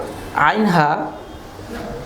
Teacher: আইন, হা এই 2টি হরফ উচ্চারিত হয় কণ্ঠনালীর মাঝখান থেকে, মধ্যভাগ থেকে। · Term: হরফে হালকি